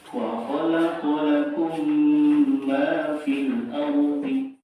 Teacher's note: Cara membacanya adalah dengan membaca mim sukun disertai gunnah yang ditahan 2 sampai 3 harokat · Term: idgham fi'il